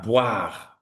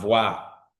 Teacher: Now, when we come to B and V, B, consonne bilabial, B. V, consonne labio-dental.